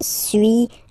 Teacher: So first one, suis, as you've been noticing, you don't pronounce the final S